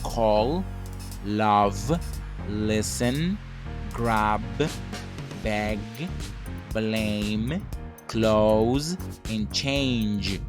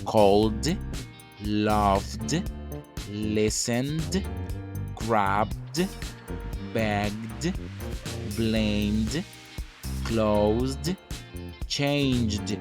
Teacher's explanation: all these verbs have a voiced sound at the end of the base form